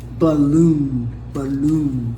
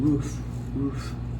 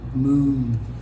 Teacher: The long sound, the muscles in the face, you can feel them tense up.